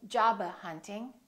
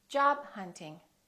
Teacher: few more words that have a stop followed by another consonant remember hold it don't release the final stop